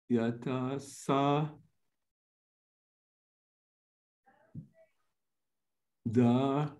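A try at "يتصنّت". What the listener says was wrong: No da. There is no da here because da does not connect.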